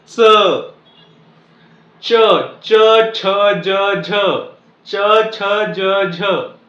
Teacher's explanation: या सर्व वर्णांचा उच्चार करत असताना माझी जीभ एका पर्टिक्युलर ठिकाणी चिकटत आहे तो आहे आपला टाळू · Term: तालू